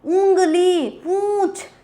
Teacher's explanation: ऐसे स्वर जिनका उच्चारण मुंह के साथ साथ नाक से भी होता है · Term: अनुनासिक